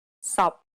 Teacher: the final p t and K are unreleased in Cantonese this means that you must not release a burst of air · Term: final stops